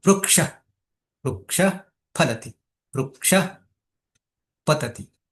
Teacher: આમ તો વિસર્ગનું ઉચ્ચારણ સ્થાન કંઠ છે અકુહ વિસર્જનનામ કંઠઃ પણ પ અને ફ બોલતા પહેલા જો વિસર્ગ આવી ગયો તો એ વિસર્ગ ક્યાં પહોંચી જાય છે હોઠમાં પહોંચી જાય છે હોઠમાં માં પહોંચી જાય છે એટલે ઉપદમાનીય કહ્યું છે ઉપદમાન્યના ઓષ્ઠવવું